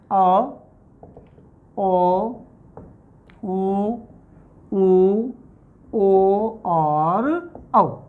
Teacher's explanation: तीसरा आता है हमारा पश्च स्वर कि वे स्वर जिनको बोलते समय जीभ का पश्च भाग सक्रिय होता है उन्हें कहते हैं हम पश्च स्वर, जिसमें आता है अ, ओ, उ, ओ और औ।